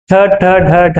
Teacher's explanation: ಇವು ನಾಲಿಗೆಯನ್ನ ಬಾಯಿಯ ಮೇಲ್ಭಾಗಕ್ಕೆ ಅಂಟಿಸಿಕೊಂಡು ಹೇಳುವಂತ ಪದಗಳು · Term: ಮೂರ್ಧನ್ಯ ಅಕ್ಷರ